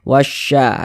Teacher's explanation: cara membacanya adalah dari huruf wa yang langsung masuk ke huruf syin ini. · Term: alif lam syamsiyah